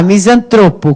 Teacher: Qual é a sílaba tônica de misantropo? É o tro.